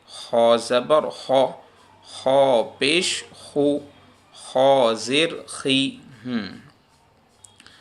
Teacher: سب سے زیادہ زبر کی حالت میں خا پر ہوگی، اس سے کم پیش کی حالت میں، اور زیر کی حالت میں پیش سے بھی کم اس کو پر پڑا جائے گا